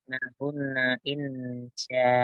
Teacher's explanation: Hunna nanya pendek, tapi yang ditahan adalah nun tasdidnya.